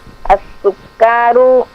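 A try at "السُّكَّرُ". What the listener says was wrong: Kafnya jangan dipanjangkan. Masih panjang. Masih panjang itu. As-sukkaru.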